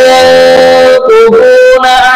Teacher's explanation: ini ada nun mati berjumlah dengan qaf, namanya ikhfa hakiki atau dibaca secara mendengung ya